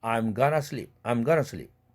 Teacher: t 사운드가 같은 치경음 은 사운드로 닮아서 은으로 바뀐 것입니다. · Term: 유성동화